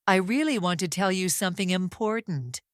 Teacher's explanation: I slow down on tell you something important because those words carry meaning. I pause after the first idea. · I pause after the first idea. I stretch the word really slightly adding emphasis. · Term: speed variation